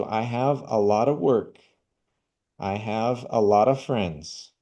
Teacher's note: É o jeito que nós reduzimos o som de of para a.